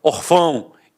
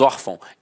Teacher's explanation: Então a sílaba tônica está na penúltima e é acentuada. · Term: paroxítona